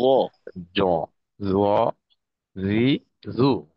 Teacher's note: জিহ্বার আগা সামনের উপরের দুই দাঁতের আগার সঙ্গে লাগবে